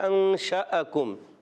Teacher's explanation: تو یہ حمزہ ہے اور اس کو جھٹکے سے ادا بھی کرتے ہیں · کاف کو باریک رکھنا ہے، کاف زبان کی جڑ اور تعلق کے سخت حصے سے ادا ہوتا ہے